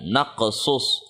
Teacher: جب ہم نے وقف کیا تو صاد کی جو پیش ہے وہ دب گئی اور وہ جزم میں تبدیل ہو گئی